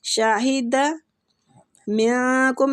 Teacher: نون کا ادھر اخفا کریں گے، اخفاء حقیقی ہو رہا ہے